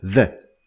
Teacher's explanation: it while that which is in today's lesson is voiced is a voiced sound which means that you use your vocal cords to pronounce it so if you put your hands on your throat you're gonna